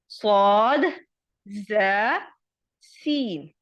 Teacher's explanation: اندرونی جو دانتوں کے کنارے ہیں وہاں ہماری زبان کی نوک لگتی ہے تو پھر ہمارے یہ 3 حروف ادا ہوتے ہیں صاد ز سین. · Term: سیٹی والے حروف